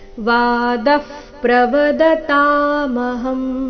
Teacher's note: ಮೊದಲ ಶಬ್ದದ ನಂತರ ವಿಸರ್ಗ ಫ ರೀತಿ ಉಚ್ಚಾರಣೆ.